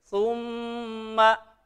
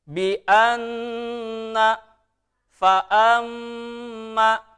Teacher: Dengung, ya. Pembacanya harus didengungkan. Tahan 2 harokat. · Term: gunnah